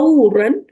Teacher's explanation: غو کو بھی موٹا کریں، آئی مین غین کو موٹا کریں، واو کو نہیں